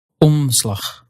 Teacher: you actually won't completely pronounce that N or M. You'll just let it affect the vowel. It's on rather than o.